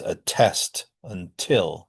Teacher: Um, So a typical T, that's a T pronounced with aspiration